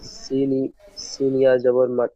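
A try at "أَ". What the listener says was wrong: জের, জের আছে, সিনিয়া মাদ জের ওটা।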